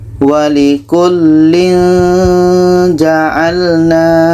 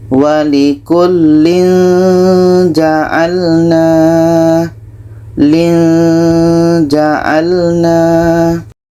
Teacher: Tanwin bertemu ja, ikhfa hakiki harus kita baca samar dan dengung.